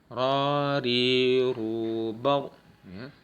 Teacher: Kemudian dia punya sifat takrir atau ujung lidahnya bergetar.